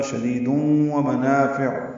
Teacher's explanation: تنوین کے بعد واو آنے کی وجہ سے ادغام ناقص غنہ ہوگا، شدیدون ومنافع، نا الف مدہ عین وسط حلق سے ادا کریں گے۔